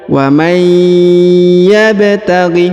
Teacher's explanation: huruf ba berharokat sukun maka dipantulkan atau dikolkolahkan